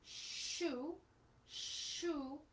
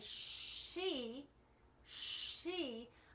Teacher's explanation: minimal change that's happening here but when i say she she i have to move from a protruded posture to a retracted posture with my lips